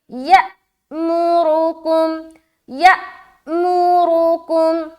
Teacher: حمزہ ہے اور حمزہ کے اوپر سکون ہے، تو جب بھی آپ کو حمزہ کے اوپر سکون دکھائی دے تو وہاں پر آپ نے جھٹکا دینا ہے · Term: حمزہ ساکینہ کا جھٹکا